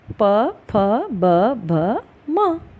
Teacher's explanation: आपके लिप्स, आपके होंठ हैं वो एक दूसरे से टकराए, यानी कि हवा का प्रेशर होंठ पर लगा और ये ध्वनि निकल पड़े। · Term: ओष्ठ्य व्यंजन